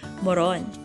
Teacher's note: The stress is placed on the last syllable